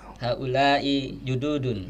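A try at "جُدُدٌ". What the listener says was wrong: Padahal kan pendek ya. Du-nya panjang atau pendek? Pendek. Kan du-nya panjang. Ya bukan lebih pendek, orang memang pendek. Kalau tadi kan jududun, panjang.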